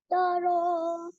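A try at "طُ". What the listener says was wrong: Not Tara. No, it is Tura, not Tara.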